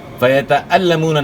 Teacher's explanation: واو مدہ ہے یہاں، واو ساکن سے پہلے پیش ہے، ایک الف کے مقدار کے برابر کھینچنا ہے